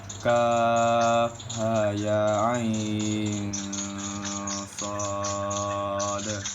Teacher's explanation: Hukumnya itu mad lazim mukhaffaf harfi karena panjang harokatnya 2 sampai 4 harokat dan terdapat pada awal surah.